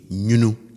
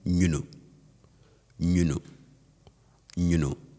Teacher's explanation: The tone with which I say this is on the higher side. So I say nyunu.